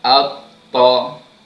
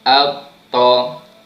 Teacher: dia punya makhraj di hujung lidah yang ditekankan pada gusi gigi gunting belah atas. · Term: huruf ta